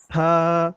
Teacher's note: সাটা যখন বলবেন, জিহ্বার আগাটা সামনের উপর দুই দাঁতের আগার সঙ্গে লাগিয়ে, তখন কিন্তু একটা বাতাস বের হবে।